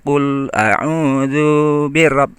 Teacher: zu-nya langsung ke bi karena zu-nya pendek, nggak boleh ditunda-tunda atau parkir dulu